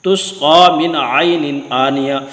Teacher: نون ساکن اور تنوین کا اظہار ہوگا، یعنی غنہ نہیں ہوگا